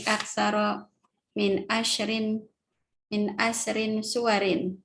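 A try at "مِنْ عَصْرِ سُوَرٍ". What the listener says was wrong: Idofah itu nggak boleh pakai tanwin. Asrinya nggak boleh bertanwin.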